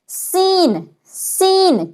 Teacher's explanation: سین میں آپ کی آواز میں ہلکی سی سیٹی کی آواز آنی چاہیے. سین، سین جب بھی کہیں سیٹی کی جیسی آواز نکلنی چاہیے.